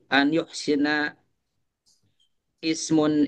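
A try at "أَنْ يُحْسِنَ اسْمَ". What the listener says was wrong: Nah, ini jangan dibaca ya karena di wasol aja ya karena apa namanya hamzah wasol kan an yuhsinasma.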